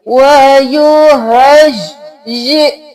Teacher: حمزہ کے اوپر جزم ہے چھٹا دے کر پڑھیں گے